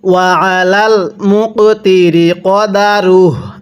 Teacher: কপটা ধাক্কা দিয়ে পড়বেন কারণ কপটি কলকলার হরফ